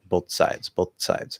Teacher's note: Do like a dental T, and then just release and slide into the s.